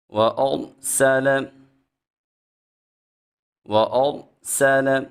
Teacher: جب را ساکن ہو اور اس سے پہلے حرف کے اوپر زبر آ جائے را کو موٹا پڑا جاتا ہے، سین میں خوب سیٹی پیدا کریں گے۔